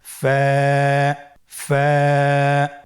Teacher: ফা হরফটি উচ্চারণের ক্ষেত্রে বারিক হবে এবং এক আলিফ টেনে পড়তে হবে। · ফায়ের মাখরাজ হলো নিচের ঠোঁটের প্যাড সামনের উপরের দুই দাঁতের আগার সঙ্গে লাগিয়ে উচ্চারিত হয়।